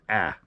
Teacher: i tend to slightly alter the alpha so it's pronounced a little bit more nasal